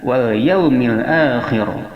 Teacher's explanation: Kha berada makharijul hurufnya di ujung tenggorokan dekat dengan lisan.